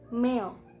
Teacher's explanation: A before I is pronounced as a glide between two vowels